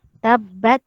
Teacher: Dia hamas saja. Dia tiada lantun.